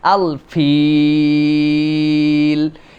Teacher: শেষে 3 আলিফ টানতে হয়